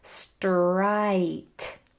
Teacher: Our lips are forward. And then we have to form that whole I sound, which is a diphthong. It has a whole lot of mouth movement in it.